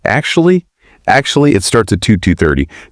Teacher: Usually your voice will dip slightly just after you say, actually, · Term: intonation dip